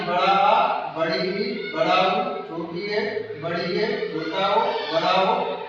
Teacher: इनको बोलने में ह्रस्व स्वरों से 2 गुना समय लगता है। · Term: दीर्घ स्वर